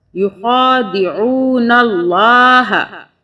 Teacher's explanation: لام کی 2 مرتبہ آواز تشدید کی وجہ سے یہ جو ہے یخادعون اللہ، ہا زبر ہا۔ اب یہاں پہ اللہ سے پہلے نون کے اوپر زبر ہے، اس لیے ہم اللہ کو موٹا پڑھیں گے۔